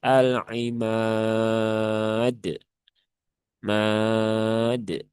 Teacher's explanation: Dia dibaca panjang ya, boleh milih 2, 4 atau 6 harokat ya, asalkan konsisten. Kalau di sini biasanya kita memilih yang 4 harokat ya. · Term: mad arid lisukun